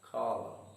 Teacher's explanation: column, stress is again on the first syllable and the letter N is silent. That is why we read the word as column.